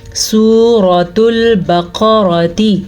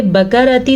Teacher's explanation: بقرہ قاف موٹے کے ساتھ ہے، اور را کو ہم پر پڑھیں گے کیونکہ را کے اوپر زبر ہے۔ یاد رکھیں را کے اوپر جب بھی زبر ہوگی یا را کے اوپر پیش ہوگی را پر پڑھی جائے گی۔